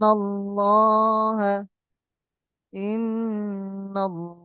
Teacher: আল্লাহ লাম মুশাদ্দাদের পূর্বে জবার এসেছে তাই আল্লাহ লামকে পুর করে পড়ব আল্লাহ লামকে পুর অর্থাৎ ল করে পড়ব এই ইজরা আপনাদের এটা